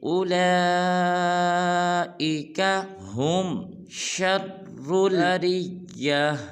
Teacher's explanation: اولا کی لام کو 5 الف مقدار لمبا کریں گے کیونکہ اس کو پر مد ہے